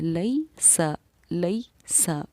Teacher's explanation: اسی طریقے سے یا ساکنہ سے پہلے زبر ہے، تو جب یا ساکنہ سے پہلے زبر ہو تو یا ساکنہ حرف لین کہلاتی ہے، اور اس کو ہمیں نرم آواز کے ساتھ جلدی ادا کرنا ہے